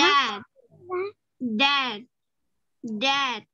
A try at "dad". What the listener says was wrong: miệng của mình nó rộng chút.